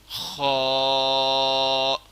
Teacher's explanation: خا بھی حروف حلقی میں سے ہے اور یہ ذرا ہا کے مقدار سے سخت پڑھنا ہے۔